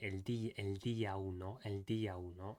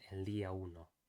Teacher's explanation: making sure that the D in Spanish is more dental rather than alveolar, making sure that the tongue is touching the back of the front teeth